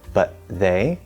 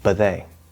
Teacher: the t just magically disappears especially in faster speech you can always enunciate it it's fine or you can stop